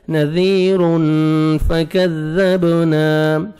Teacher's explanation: اخفاء میں صفا ہے آپ نے نوز میں ساؤنڈ لے کے جانا ہے